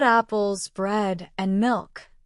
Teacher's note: If I say, I bought apples, bread, and milk, my voice goes up on apples, up on bread, and then down on milk. That falling tone on the last item shows the list is finished.